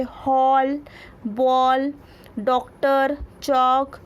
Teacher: इसका उच्चारण आ और ओ के बीच की ध्वनि के रूप में होता है। इसका चिन्ह चांद होता है। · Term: आगत ध्वनि